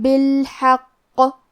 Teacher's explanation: نبأہم بالحق کلمت بالحق میں آخری میں قاف پہ تشدید ہے، لہذا ہمیں تشدید کو ظاہر کرنا ہے اور ہم حرف القاف کو موٹی آواز میں پڑھیں گے